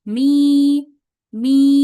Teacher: huruf mim berharakat kasrahnya menjadi panjang ya karena bertemu dengan ya sukun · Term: huruf mad